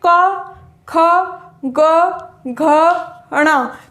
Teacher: ये 5 जो है ये हमें कंठ से इनकी ध्वनि निकलती है